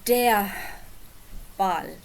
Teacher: It's just a schwa, just some air falling softly out of your mouth. So, it's der Ball. · You don't actually pronounce this R because it's at the end of a word or at the end of a syllable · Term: schwa sound